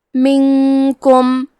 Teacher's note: کاف حروف الاخفاء میں سے ہے تو ہم یہ حکم کو غنہ کے ساتھ ادا کریں گے